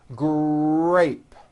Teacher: in the word grape the our sound is stronger and you even hear it more than the G sound